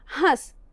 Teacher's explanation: और जब हम कहते हैं हंस, इसमें भी देखिए ह का उच्चारण करते समय उसमें जो लगा हुआ अ है उसका उच्चारण करते हुए थोड़ी नासिका से भी वायु निकल रही है और उच्चरित हो रहा है हंस। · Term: अनुनासिक